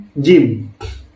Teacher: konsonan gabungan ini adalah gabungan antara konsonan letupan dan geseran. Jadi di sini tidak terjadi letupan, tidak terjadi memang letupan, dan tidak juga terjadi geseran gitu.